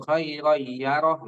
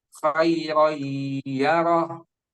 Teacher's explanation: agak ditahan dua harokat. Jangan langsung khairoyaroh lah. Tapi ditahan dulu.